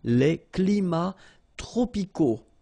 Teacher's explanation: So you can see that even if we've got the plural form here, S, we don't pronounce the S, and then we don't pronounce the T either